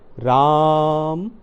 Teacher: जैसे हम किसी को आवाज़ लगाते हैं, जैसे राम, तो उसमें जैसे आ की आवाज़ थोड़ी लंबी आई, यानी ये प्लुत स्वर हुआ